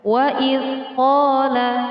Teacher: Panjang mad tabi'i, satu alif dua harokat. Kira-kira ketika membacanya cukup dengan satu ketukan saja.